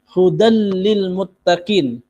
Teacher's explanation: Ini namanya idgham bila ghunah. Memasukkan huruf lam tanpa diikuti dengan dengung.